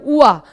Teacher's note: दंतोष्ठ है, माने दंत और ओष्ठ की मदद से बोला जाता है उआ। आप महसूस करिए जब आप उआ बोल रहे हैं, उआ, तो उआ बोलते समय हमारी जीभ दांतों पे टच होती है और हमारे ओष्ठ आपस में संपर्क करते हैं। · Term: दंतोष्ठ व्यंजन